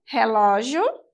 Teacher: cujo a sílaba tônica é a penúltima, logo é uma paroxítona, terminada em ditongo.